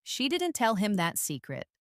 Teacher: the stress is on she